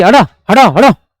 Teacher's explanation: आपको लग रहा होगा कि जीभ झटके के साथ में, अर्थात धक्का मार करके इन वर्डों को मुंह से निकाल लेगी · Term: उत्क्षिप्त